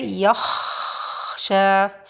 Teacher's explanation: air is produced and time is given for the Kha to run more